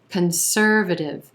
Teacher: the second syllable and the er as in purple sound conservative that first syllable that c-o-n is going to be a schwa very quick concer then another schwa very quick conservative again it's that contrast